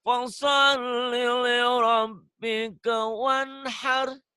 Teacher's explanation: Bagus, linya jangan ada jeda.